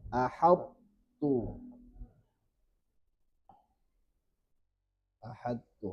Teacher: To ketemu ta, maka ini to-nya masih tersisa sifat itbaqnya. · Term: idgham naqis